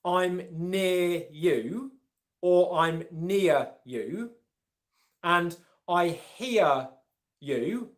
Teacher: the R sound at the end of near and here is silent